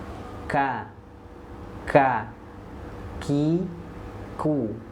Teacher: Pangkal lidah paling belakang menyentuh ke langit-langit lunak. Sedangkan huruf kaf, nah itu di depan daripada huruf qaf sedikit, menyentuhnya ke langit-langit lunak dan keras. Ka, ki, ku.